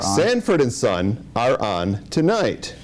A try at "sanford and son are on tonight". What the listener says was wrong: you're pushing that it's like too much too much juice on it do it again so more realistic